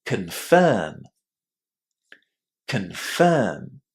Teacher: the stress in that word falls on the second syllable, and because of that, our first syllable in this word is really, really short. You shouldn't say con.